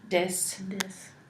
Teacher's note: if it's at the beginning of the word it's replaced with like a D sound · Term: dental stops